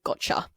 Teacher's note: instead of y, we've got ch because it's closer to the t in the place of the mouth, place of articulation. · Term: assimilation